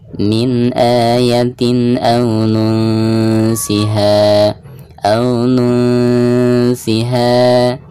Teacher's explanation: nun sukun berhadapan dengan huruf ikhfa sin, maka suara nun sukun tersebut harus disamarkan disertai dengan gunah, dan tingkat kesamaran dan gunahnya itu seimbang karena termasuk ikhfa ausat.